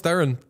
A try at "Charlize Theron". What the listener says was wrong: Apparently, you're both wrong, by the way, about the pronunciation. Apparently, it's more of like a Thrawn. Or Thrawn, like Thrawn. It's not, there's not like, it's like a one syllable kind of thing.